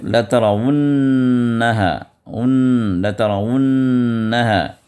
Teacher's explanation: نون مشددہ ہے، یہاں پر بھی 2 حرکت تک آپ نون کو ادا کریں کیونکہ ادغام مع الغنہ ہے